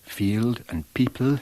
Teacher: you hear the very clear L that she uses, again distinct from the usual RP form